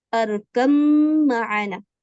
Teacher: یہاں پہ یہ با پورا کا پورا مدغم ہو چکا ہے میم میں، یعنی اب با کی کوئی آواز نہیں آئے گی